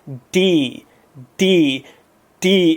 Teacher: D comes more from your tongue being against the roof of your mouth and hitting the back of your teeth d d well I